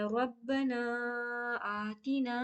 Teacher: یہاں پہ با میں تشدید ہے تو را کو با کے ساتھ ملائیں گے